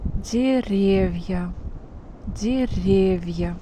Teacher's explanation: The stress changed its place and now it's on the second syllable.